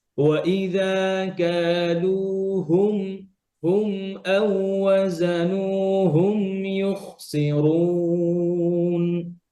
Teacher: আর হা গুলো ক্লিয়ার যেন নাকে না যায়, হুম হুম নাকে না আসে।